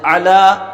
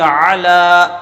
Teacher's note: تو عین پر زبر ہے، بغیر کھینچے پڑھیں گے۔ لام پر کھڑا زبر ہے تو ایک الف کے برابر اسے ہم کھینچ کر پڑھیں گے۔ عین کے بارے میں آپ کو بتایا تھا کہ درمیان حلق سے ادا ہوتا ہے۔